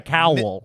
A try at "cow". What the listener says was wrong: You're saying cowl, dude. Like vowel.